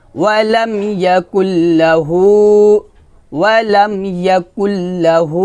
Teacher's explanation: আমরা এই কাফকে এই লামের সাথে মিল করব, তবে গুন্না করব না। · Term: ইদগামে বেলা গুন্না